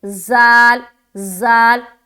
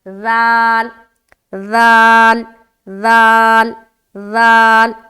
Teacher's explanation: ایک تو سختی بھی آپ نے کر دی، دوسرا سیٹی کی ساؤنڈ آ رہی ہے، جبکہ سیٹی کی ساؤنڈ نہیں آنی چاہیے. ہمیں نرمی کے ساتھ ذال کو ادا کرنا ہے